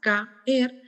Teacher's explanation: una palabra como caer tiene 2 sílabas, caer, ya que están formados justamente por vocales abiertas. Y estas vocales abiertas son tan fuertes que provocan la ruptura del diptongo, ¿sí? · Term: hiato